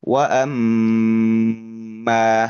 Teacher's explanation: Mim tasdid. Mim tasdid itu dibaca dengan menahan lebih lama. Tahan huruf mimnya ya. · Yang lebih tepat adalah wa amma gitu ya. Lebih lama ya untuk mim tasdid.